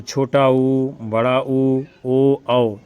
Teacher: ऐसे स्वर जिनका उच्चारण करने पर ओष्ठ का आकार गोल हो जाता है उसे कहते हैं वृत्तमुखी या वृत्ताकार स्वर।